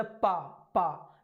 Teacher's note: जब हम पा बोले तो दोनों होंठ मिल रहे हैं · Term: पावर्ग